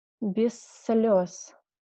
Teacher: If we have this combination of z, like space, and s, it should be read like long S. I will write it like double S, something like that.